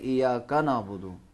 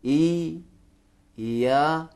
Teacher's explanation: क्योंकि ज़बर के बाद अलिफ है, ई या पढ़ेंगे, और या पे भी जोर लगाएंगे क्योंकि शद है, तशदीद है।